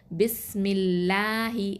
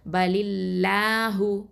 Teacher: அல்லாஹ் அப்படிங்கிற வார்த்தையில் உள்ள லாமை மெல்லினமாக, அதாவது தர்கைக்கா உச்சரிக்கணும்